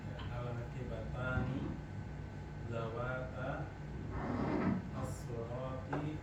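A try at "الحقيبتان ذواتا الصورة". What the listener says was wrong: Nah, sunya pendek. Zawatas surati. Al-haqibatani zawatas surati. Zawatas surati.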